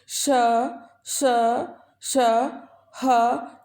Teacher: इन वर्णों के उच्चारण में मुख से विशेष प्रकार की गर्म वायु या ऊष्म निकलती है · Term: ऊष्म व्यंजन